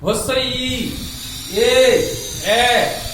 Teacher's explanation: এখানে আমার ওষ্ঠ এবং অধর কি হচ্ছে প্রসারিত হয়ে যাচ্ছে, সেই জন্য এদেরকে বলা হচ্ছে প্রসৃত বা প্রসারিত স্বরধ্বনি।